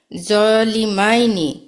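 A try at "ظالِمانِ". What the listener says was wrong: আবার মাইনি কেন?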